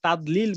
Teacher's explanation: দদের উচ্চারণ হবে না, ওটা দালের উচ্চারণ হয়ে যাবে।